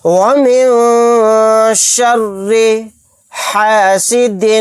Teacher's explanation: نون ساکن کے بعد شین آ گیا، یہاں پر اخفا کا قاعدہ ہوگا